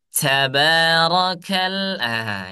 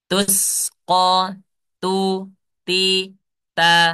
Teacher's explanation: ta dalam pengucapan apalagi ada harakatnya tidak perlu adanya hams ya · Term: huruf ta